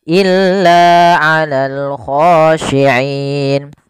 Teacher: kita boleh memanjangkan 2 harokat, boleh pula 4 harokat, dan boleh pula 6 harokat. Contoh, illa 'alal khashi'in 2 harokat, illa 'alal khashi'in 4 harokat, illa 'alal khashi'in. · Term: mad arid lis-sukun